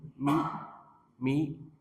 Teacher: min mim dari dua bibir